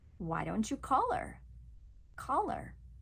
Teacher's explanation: Hear how we drop the H.